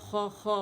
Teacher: خا کے لیے کیونکہ وائس لیس لیٹر ہے، پیچھے سے ہوا آتی ہے، تو اگر یہ بند ہو جائے گا تو خا کی جو آواز آئے گی والی آواز آئے گی اور وہ بہت عجیب بھونڈی سی آواز رکھتی ہے، ٹھیک ہے، اور وہ مخرج بھی صحیح نہیں ہے.